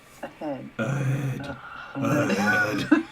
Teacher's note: They always say that that's where the voiced H is. It's in a word like ahead.